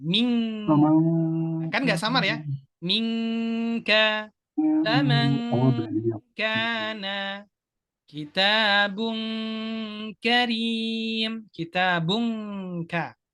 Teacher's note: Dengungnya ini berbunyi eng, nggak ada samarnya.